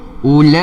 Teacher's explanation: Bacaan dia mad wajib muttasil, kadar harokat panjang dia adalah 4 atau 5 harokat.